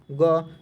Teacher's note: अल्प प्राण इन व्यंजनों का उच्चारण में मुख से कम वायु निकलती है